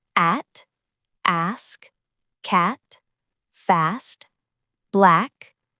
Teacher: This is the bright short a sound. Your mouth opens wide and your tongue stays low and forward. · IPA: /æ/